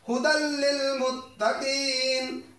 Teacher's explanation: ہدی للمتقین لام آ گئے ہم تنوین نہیں پڑھیں گے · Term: ادغام بغیر غنہ